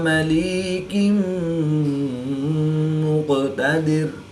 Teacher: 2 زیر کی تنوین کے بعد میم حروف یرملون میں سے ہے تو یہاں پر ادغام مع الغنہ ہوگا، یعنی غنہ کر کے پڑھیں گے۔